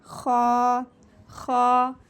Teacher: यानी कि खरोश गले में वाज़ेह हो और इसको पुर पढ़ना है, यानी कि ये भी मोटा हरूफ है, पढ़े जाने वालों में से मोटा हरूफ।